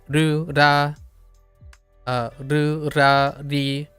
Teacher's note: I'm trying very hard not to roll twice or more with the tap.